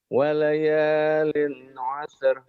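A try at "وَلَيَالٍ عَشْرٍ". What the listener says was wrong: walayalin asyr. Tuh shinnya kurang keluar tuh ya.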